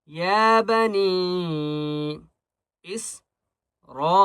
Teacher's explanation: بڑی مد ہے را کے اوپر، اس لیے 5 الف کی مقدار کھینچ کر پڑھیں گے